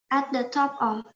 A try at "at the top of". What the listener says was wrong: Masih putus sedikit. At top. At the top of. Masih putus sedikit. Top of. Puff. P-O-F. Puff. Yes, puff. Top of.